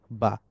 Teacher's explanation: It's a প্লোসিভ sound, air is trapped and then released when lips part. যে বাতাস আবদ্ধ থাকে, বাতাস বের হয় না, বাতাস যখনই মু- ঠোঁট দুইটা আলাদা হওয়ার মাধ্যমে যখনই বাতাস বের হয় তখনই উচ্চারিত হয় বা।